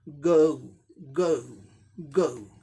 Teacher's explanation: mixture of अ ऊ sounds